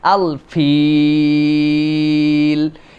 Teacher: শেষে 3 আলিফ টানতে হয়